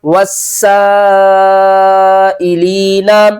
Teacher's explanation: حروف مدہ بھی اور بڑی مد بھی ہے، الف سے پہلے زبر ہے